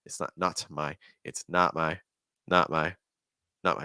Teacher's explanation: Do you hear how the T is a held T?